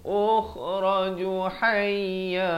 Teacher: kha di hujung kerongkong